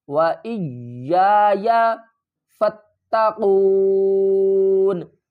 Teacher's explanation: یا کے اوپر سختی کریں گے، دوسرے یا کو ہم تھوڑا سا نرم پڑھیں گے